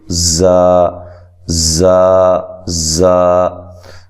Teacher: اس کو نرم ادا کرنا ہے، ٹھیک ہے. اس میں سیٹی کی آواز نہیں آنی چاہیے